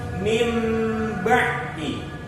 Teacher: kalau ada nun mati bertemu dengan ba, nunnya diganti menjadi mim. Ingat, bukan ba-nya yang diganti mim, tapi nunnya yang diganti mim. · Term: hukum iklab